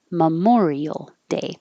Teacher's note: we don't stress the first syllable. So instead of memorial, it's Memorial Day.